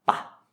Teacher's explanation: It finishes with a short vowel, which means that it is a dead syllable, and so those are pronounced with a low tone.